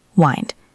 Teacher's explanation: It is not wind like the weather. It is wind like to wind a clock. Long I. Wind.